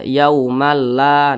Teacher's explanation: Tidak berdengung dia. Jangan dipanjangkan. Jadi dibaca pendek saja. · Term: idgham bila gunnah